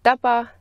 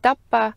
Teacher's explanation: in the word taba, the stop is a short voiceless p, and in the name tapa, the stop is a long p